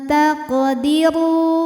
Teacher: Huruf ra dibaca secara tafkhim karena ra berbaris dhammah, maka dibacanya tebal. · Sukunnya asli ya, dan ada di tengah bacaan. Maka dibaca dipantulkan dengan pantulan yang kecil. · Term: qalqalah sughra